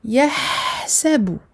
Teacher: dans ce mot, je marque la durée du ha. Je lui donne son temps d'écoulement du son. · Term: Rakhawa